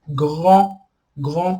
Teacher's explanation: Em francês, grand, grand com um D no final, a gente não pronuncia o D.